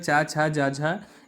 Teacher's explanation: ये आपका तालव्य व्यंजन हो जाएंगे